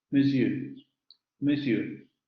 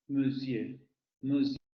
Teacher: Labializado, a diferencia del sonido schwa no labializado del inglés.